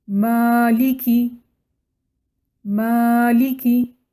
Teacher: یہاں پر میم کو ہم 2 کاؤنٹ لمبا پڑھیں گے، یعنی ڈبل کاؤنٹ پڑھیں گے۔ میم زبر ما سنگل کاؤنٹ ہے اور میم زبر الف سکون ما ڈبل کاؤنٹ ہے۔